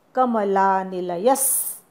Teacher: कमलानिलय नंतर विसर्ग आहे, त्याचा आघात पुढच्या स वर द्यायचा. कमलानिलयस असं म्हणायचं.